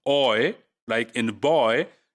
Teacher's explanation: it is starting from quite the back of the tongue and then it is going towards the you know the front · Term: long diphthong